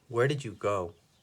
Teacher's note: our voice goes down on go